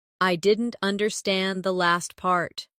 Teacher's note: Stress last part to focus the listener's attention.